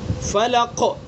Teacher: فلق کا جو قاف ہے یہاں پر جو سکون آیا یہ سکون وقفی ہے، یعنی وقف کر رہے ہیں تو یہاں پر یہ سکون آ رہا ہے، تو یہاں پر دوسرے درجے کا قلقلہ ہوگا۔